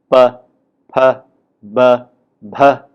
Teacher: aspirated, voiceless or voiced, bilabial, plosive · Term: four-term labels